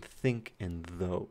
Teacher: these are interdentals. So these are in between your teeth. Your tongue goes in between your teeth to make them. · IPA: [θ]